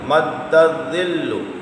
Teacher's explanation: دال حروف قلقلہ ہے، مشدد ہے، جماؤ کرنا ہے